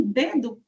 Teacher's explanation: a nossa língua, a ponta da língua se encosta no nosso dente. Então, em dedo, por exemplo, fica bem clara essa articulação.